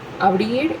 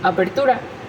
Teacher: está cambiando la oclusiva bilabial sonora por la sorda